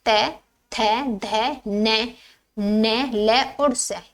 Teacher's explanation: दंत्य ध्वनि वो होती है जिनके उच्चारण में जीभ दांतों के पिछले भाग को स्पर्श करती है।